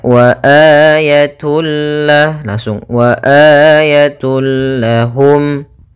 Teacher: idgam Bil gunah yaitu huruf lam di sini maka cara membacanya masukkan tanwinnya kepada huruf lam tanpa ditahan gunah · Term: Idgham bila ghunah